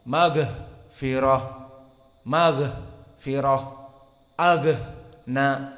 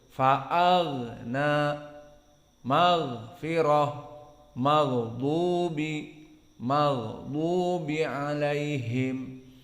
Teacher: karena dia jahar tidak boleh hams, maka gha-nya menjaga dari nafas